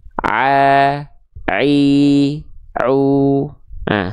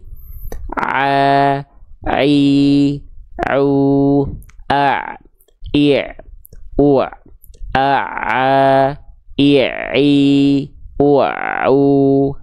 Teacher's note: seperti itu huruf Ain dilafalkan katup epiglotisnya menyempit ke arah dinding tenggorokan